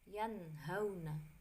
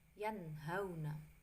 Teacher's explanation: Contohnya, nun sukun bertemu dengan huruf ha, bacanya yanhauna. Jadi dibaca jelas, idhar itu jelas, tidak berdengung ya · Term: izhar